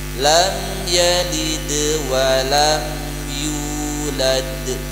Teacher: Kalau di tengah-tengah dalam ayat tidak berhenti dia qalqalah sughra. Makanya ringan.